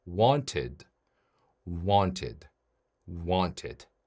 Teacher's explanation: 마지막 소리가 t로 끝났습니다. t나 d로 끝나는 동사 뒤에 ed가 붙어서 과거형을 만들면 이 ed 발음은 네, 그렇죠. id로 발음합니다. 그래서 want 뒤에다가 id를 붙여서 wanted, wanted, wanted. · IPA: /ɪd/